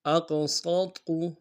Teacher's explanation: سین کی سیدھی باریک ہوگی، قاف کو موٹا ادا کریں گے